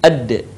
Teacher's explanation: lidah kita ke gusi bagian atas sebagaimana kita melafalkan huruf ta di dalam keadaan mati huruf da terdengar suaranya memantul